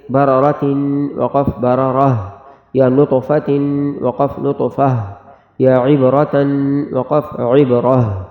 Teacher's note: گول تا پر جب وقف کریں گے تو وہ ہا پڑھی جائے گی